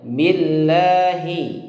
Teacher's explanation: lafadz Allah itu tipis ya karena sebelumnya diawali atau didahului dengan huruf ba' yang kasrah